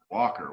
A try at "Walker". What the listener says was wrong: The L. Who the fuck pronounces the L?